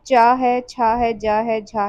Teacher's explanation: लेकिन अब इनको भी स्पर्श व्यंजनों के वर्ग में रखा जाता है। इनके उच्चारण में उच्चारण अवयव सहसा खुलने की बजाय धीरे-धीरे खुलते हैं। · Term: स्पर्श संघर्षी